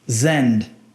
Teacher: esse N neutraliza o som do D. Ou seja, o D não vai ser pronunciado.